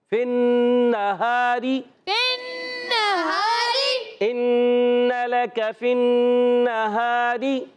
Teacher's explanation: اور را کے نیچے زیر آنے کی وجہ سے را ہو جائے گی باریک. فن نہاری ان لک فی النہاری.